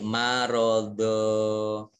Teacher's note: Jadi fathah tanwin bertemu dengan huruf alif, maka dibaca tanwinnya dibaca fathah dan panjang 2 harokat menjadi mat tobi'i